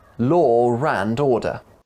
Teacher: important i think law and order is very important influence speech if a word ends in an or sound like law and the next word begins in an uh you'll often hear a r sound linking them together law rand order law and order law and order is easier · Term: intrusion